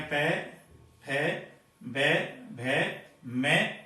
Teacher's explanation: होठ आपस में एक दूसरे को स्पर्श करते हैं, तब ये ओष्ठ्य वर्ण कहलाते हैं।